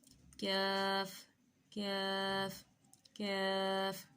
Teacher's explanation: کیف کا مخرج ہے زبان کی جڑ جب سخت تالو سے لگے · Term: باریک کیف